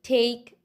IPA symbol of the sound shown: p, t, k